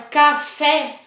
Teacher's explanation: vocês vão observar que o fé é uma sílaba mais forte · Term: sílaba tônica